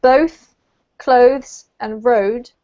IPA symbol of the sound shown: əʊ